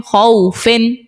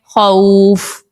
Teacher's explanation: واو لین کے بعد فا کے نیچے جو دو زیر ہے اس کو آپ نے وقف کی صورت میں سکون عارضی دے کر ساکن کرنا ہے. یہاں پر واو لین کی وجہ سے مد لین عارض کا قاعدہ ہوگا.